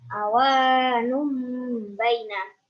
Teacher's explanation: Alasannya karena domah samin bertemu dengan ba. Cara membacanya dengung 3 harokat seperti suara mim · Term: iklab